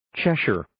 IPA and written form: 'tʃɛʃɝr (Cheshire)